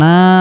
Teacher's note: নুনের উপর খারা জবর থাকার কারণে এক আলিফ পরিমাণ লম্বা করে টেনে পড়তে হবে।